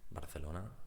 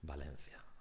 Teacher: in Spanish B and V is the same pronunciation. Barcelona, Valencia, same pronunciation.